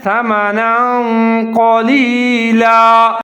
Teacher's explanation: نون کے اوپر دو زبر ہے، جہاں ہم اخفا کریں گے، قاف اخفا آ رہا ہے